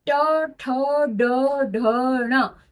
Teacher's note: ये पांचों ही वर्ण मूर्धा को टच करके आप तक ये अक्षर पहुंचते हैं, ये आवाज पहुंचती है, इसलिए हमने ट वर्ग को मूर्धा में रखा।